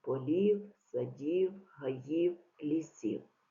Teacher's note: виділені слова однорідні члени речення вимовляємо з перелічувальною інтонацією